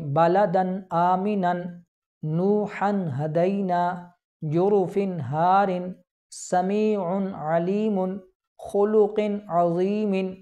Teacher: تو معلوم ہوا کہ نون ساکن یا تنوین کے بعد حروف حلقی میں سے کوئی حرف آ جائے تو اظہار ہوگا، یعنی نون ساکن اور تنوین میں غنہ نہیں کریں گے بلکہ نون ظاہر کر کے پڑھیں گے